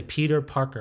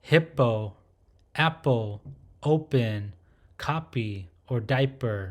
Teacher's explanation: it does not have a strong aspirated sound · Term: softer p sound